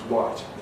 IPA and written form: waɪt (white)